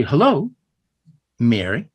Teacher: you hear that Mary, the emphasis is on syllable 1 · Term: trochee